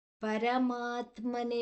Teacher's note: ಪರಮಾ ದೀರ್ಘ ಅಕ್ಷರ ಉಳಿದದ್ದು ಪರ ಹರಸ್ವ ಅಕ್ಷರ